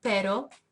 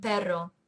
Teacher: Spanish has two R sounds. The flapped R in pero and the trilled or rolled R in pero.